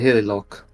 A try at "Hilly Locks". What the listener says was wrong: Hilly Locks. It has an S at the end.